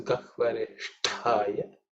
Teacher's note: So here also, the Sha is cerebral Sha, and the Ta is the second Ta, so it has to be aspirated.